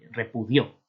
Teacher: Y lleva tilde pues, porque al ser el pretérito indefinido, pretérito perfecto simple de indicativo, es repudió, ¿verdad? Con el acento, la carga acentual en la última sílaba. Entonces lleva tilde. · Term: aguda